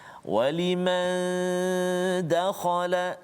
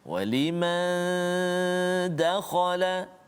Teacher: nun mati bertemu dengan dal, dengung dua harakat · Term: ikhfa